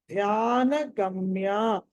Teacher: ధ్యాన మహాప్రాణం ఒత్తి పలకాలి